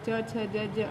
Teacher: तालु से होता है छोटी ई, बड़ी ई, च वर्ग, च, छ, ज, अंग, और य और श, तो इसलिए इन्हें तालव्य कहते हैं। इसमें इनका उच्चारण करते समय हमारी जो जिह्वा होती है, यानी जीभ होती है, वो तालु को स्पर्श करती है।